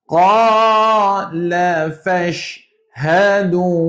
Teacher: Fash, shin tuan-tuan sifat dia kena ada angin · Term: Tafashi